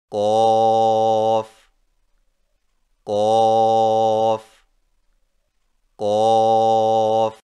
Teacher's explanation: قوف کی ادائیگی میں زبان کی جڑ کو کوے کے متصل تالو پر لگا کر موٹی آواز میں پڑھیں